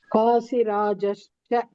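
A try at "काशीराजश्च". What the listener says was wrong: Kashi. It is not Kasi. Kashi Rajas.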